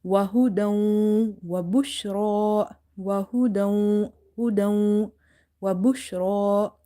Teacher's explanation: This idgham, this merging was without gunna, but here we will merge as well as we will do gunna or nasalization.